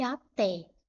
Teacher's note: É a última sílaba mais forte. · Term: oxítona